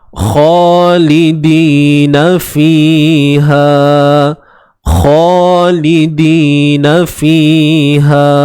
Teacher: Kha baris atas dan dibaca dengan 2 harakat. Nampak alif mat kecil kat sini.